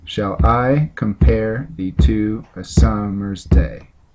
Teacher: in poetry that is made of up to 5 ft with each foot consisting of an unstressed syllable followed by a stressed syllable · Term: I Amic pentameter